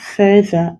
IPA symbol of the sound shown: ð